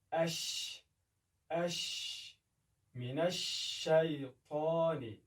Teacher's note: د شین د ادا کولو په وخت کې هوا پاشل کېږي لکه اش من الشیطان یعنی هوا پاشل کېږي اما دومره په شدت سره نه لګېږي لکه د جیم په وخت کې.